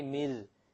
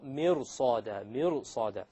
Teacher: the ra, when you make it heavy, it makes it easier to pronounce the sad.